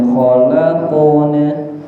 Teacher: qalqalah qaf diangkat pangkal lidahnya